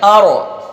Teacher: اور را کو پر کرنے کا آسان طریقہ آپ کو بتایا گیا ہے کہ را کو موٹا یعنی پر کرنے کے لیے زبان کا اگلا حصہ ہمارا جو ہے اس کو تالو کی طرف بلند کر کے تھوڑا کپ کپاتے ہوا جب آپ رکھیں گے تو را موٹی ہو جائے گی آپ کی